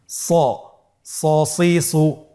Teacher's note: এই হরফটি সা বলা যাবে না, স বলতে হবে, একটু মোটা করে বলতে হবে।